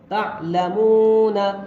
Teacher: عین کو تھوڑا نرم آواز سے اور حلق سے نکال کر پڑھ رہے ہیں